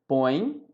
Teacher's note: a pronúncia é pelo nariz é um ditongo nasal